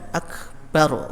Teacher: akbaru dibaca akbar, ra-nya disukunkan ya, dengan sukun.